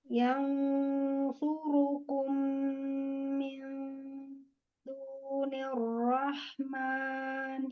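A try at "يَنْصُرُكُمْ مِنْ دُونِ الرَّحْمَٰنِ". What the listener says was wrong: Iya, domah monyongkan lagi.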